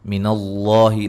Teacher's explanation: لفظ اللہ کو خوب موٹا ادا کریں گے، اس سے پہلے حرف پر زبر ہے